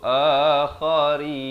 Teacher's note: Kha di hujung kerongkong.